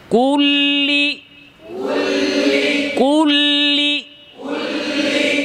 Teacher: আওয়াজটা ফুসফুস থেকে বের হয়ে জিহবার গোড়া হয়ে মধ্যখান হয়ে তারপরে জিহ্বার মাথার দুই সাইড দিয়ে চলে গেল জিহ্বার অগ্রভাগের জিহবার আগার দুই সাইড দিয়ে চলে গেল বুঝতে পেরেছেন